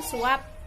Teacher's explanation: Bila berada pada akhir kata, fonem P tidak dilafalkan secara lepas. Mulut kita masih tetap tertutup saat membunyikannya. Misalkan suap.